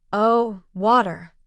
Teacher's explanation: Pronouncing the word in the London way with the T sound softer, almost like wah.